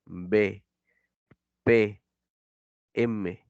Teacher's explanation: son producidos por el contacto entre los labios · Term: bilabiales